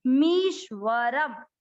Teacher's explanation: म पे बड़ी ई की मात्रा दीर्घ करेंगे, मी आधा श उसके साथ, मीश्वरम, मीशवरम कोई नहीं बोले, श आधा है, मीश्वरम।